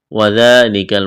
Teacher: وذالک الفوز العظیم، وذالک، واو کو جلدی پڑھنا ہے، ذال کو ایک الف کے برابر کھینچنا ہے، ذال کو نرم کرنا ہے، کاف کو باریک کرنا ہے